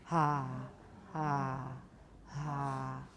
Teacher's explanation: make a breathy H and then a regular ah with no breathiness